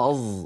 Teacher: الصاد المشمت زايا يعني الصاد المخلوطة بحرف الزاي